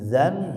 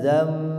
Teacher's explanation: Sini ada suara nun yang dirubah ke huruf mim ya. Karena nun sukunnya bertemu huruf ba. Asalnya bunyi zan jadi zam.